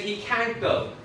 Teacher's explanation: They're putting stress on can't.